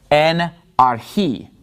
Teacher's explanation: So the accent is on the last syllable in this word archi.